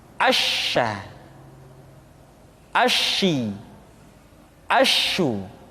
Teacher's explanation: sifat at-tafashi, yaitu menyebarnya angin di dalam mulut kita